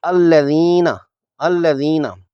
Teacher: صراط الذین میں ذال زیر والی اور یائے ساکنہ سے یائے مدہ کو 2 حرکات کی مد کرنی ہے، مد اصلی کرنی ہے۔ ذال حرف لسویہ ہے یعنی نرم حرف ہے، اس کا مخرج زبان کی نوک اور سامنے کے دانتوں کے کنارے ہیں۔ زبان کی نوک ہلکی سی دانتوں سے باہر ہوگی، سیٹی کی آواز نہیں آنی چاہیے۔